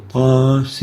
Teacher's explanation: the extension or the lengthening of the a of the ta is only for 2 units, but the sin is extended for longer than that